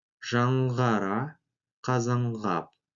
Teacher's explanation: Сочетание звуков «н-қ» произносится как «нг».